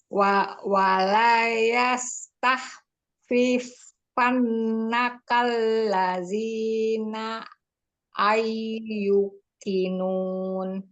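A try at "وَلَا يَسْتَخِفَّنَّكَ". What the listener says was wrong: Itu tahif, bukan tahif. Kho-nya tidak bertasdid. Yang bertasdid fa dengan nun. Wala yastakhif. Bukan tah. Tahif.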